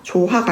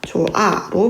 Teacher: 예를 들면 넌 너 좋다 할 때 더하기 아가 그죠? 조하가 아니라 조아로 발음이 나는 것 뒤에 모음으로 시작되는 형식 형태로 왔기 때문에 이 앞에 있는 히읗이 탈락되는 겁니다. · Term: 히읗 탈락